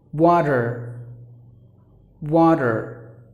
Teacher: people pronouncing the letter T like the D as in water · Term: flap T